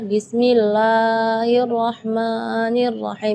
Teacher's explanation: Berlebihan dari segi madnya. Jadi bismillah itu kepanjangan.